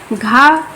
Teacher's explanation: घा कंठ, स्पर्श, घोष और घा महाप्राण है। ठीक है, क्योंकि ये प्रत्येक वर्ग का चौथा वर्ग है।